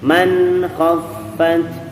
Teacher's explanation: Nun sukun bertemu dengan kha. Murni di nun sukunnya. Tetap ada gunnah di nunnya, sekadarnya saja. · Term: ikhfa halqi